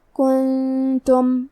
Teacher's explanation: تا حروف الاخفاء میں سے ہے تو ہم یہ حکم کو غنہ کے ساتھ ادا کریں گے